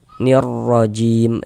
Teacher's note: Jim dibaca panjang. Ini namanya mad sukun.